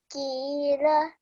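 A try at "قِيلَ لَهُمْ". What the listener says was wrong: Yeah, so we're saying it from the throat. Just practice this a bit more because when we're reciting, there should be a difference from how we're reading a normal kaf and then a qaf. Okay, so for example, over here, this is a kaf and then this is a qaf.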